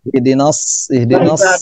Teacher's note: shadnya jangan lupa ini memiliki sifat khususnya yaitu berdesis ya, atau disebut dengan sofir.